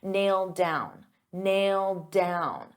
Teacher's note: So because I have a D sound on down and these two go together, I'll pronounce it as one and you'll only hear one D sound.